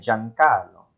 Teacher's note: I'm going to fuse the two vowels and pronounce them as ja, jo, ju.